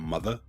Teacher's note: The first component is the dropping of the final R.